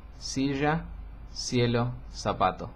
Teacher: Nosotros igualamos los sonidos de las palabras que se escriben con C, con Z, con S y con C antes de E e I. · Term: el seseo